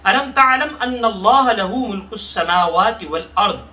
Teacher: तालम अन्नल्लाह पे हम गुन्ना कर लेंगे, लफ्ज़ अल्लाह को मोटा पढ़ लेंगे, और वल अर्द की रा को मोटा और दाद को मोटा